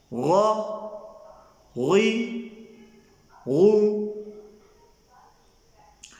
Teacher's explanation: غین اور خا ادنائے حلق سے ادا ہوتے ہیں۔ یہ گلے کا وہ حصہ ہوتا ہے جو منہ کی طرف ہوتا ہے۔